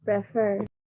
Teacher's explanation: there's like a stress on the second second syllable